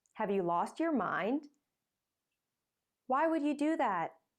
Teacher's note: to criticize someone use a rising tone